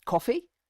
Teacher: well that's me just saying the word coffee and um but by going up at the end that makes it clear that I'm asking you a question